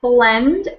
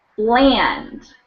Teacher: Blend is more dropped low, and bland is kind of wider.